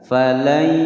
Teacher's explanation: jadi nunnya langsung masuk ke ya. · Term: idgham bi gunnah